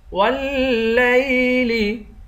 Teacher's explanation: واو کو لام سے ملا کر لام کو سختی کے ساتھ جما کر پڑھیں گے۔